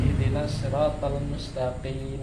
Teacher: Lunak atau daging atau lembut paling belakang setelah tenggorokan ya, yaitu hurufnya qaf ya